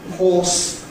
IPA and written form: hɔːs (horse)